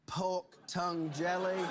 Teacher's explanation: o som do R é trocado por um som de vogal quando ele fala